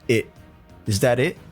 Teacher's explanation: I even think he drops the T sound at the end of it, so there's that stop T sound.